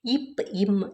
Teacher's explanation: ரெண்டும் மேலிதழும் கீழிதழும் பொருந்துவதால் பிறக்கின்றன